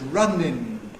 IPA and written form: ˈrʌnɪn (running)